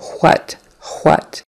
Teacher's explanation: they will pronounce an H at the beginning of the word what or where or why · there are certain regions of the country and really certain demographics in the country that will say the H first you know we have that sort of a silent h there